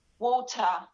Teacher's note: We have to say it fully. It's not a flap T, it's a full T